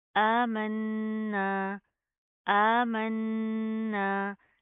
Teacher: आमन्ना, हमज़ा खड़ा ज़बर आ, मीम नून ज़बर मन, नून अलिफ ज़बर ना, आमन्ना, आमन्ना। नून के ऊपर शद है, गुना करेंगे, ना के अंदर साउंड पैदा करेंगे।